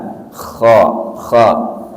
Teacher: Kha huruf halqi. Kha, makanya jangan ditaruh di lisan.